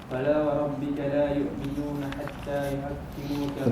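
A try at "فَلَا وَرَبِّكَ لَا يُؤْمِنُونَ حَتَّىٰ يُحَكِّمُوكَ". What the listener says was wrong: Bukan yu', dia bukan ain yu, bukan yu'. Jangan bunyi ain. Yu'minu bukan yu'. Itu bunyi ain.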